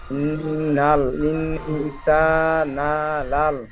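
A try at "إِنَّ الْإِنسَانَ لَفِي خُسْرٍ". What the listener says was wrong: লাল নয়, সা না, নুনটা একটু টান হবে না, লাম জবর লা, ইনসানা লা,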